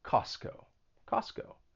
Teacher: So in this case, the T is removed. You're not gonna pronounce that T. Costco. And the reason for that is that when the T comes between two consonant sounds, it may elide and it just gets removed. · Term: elision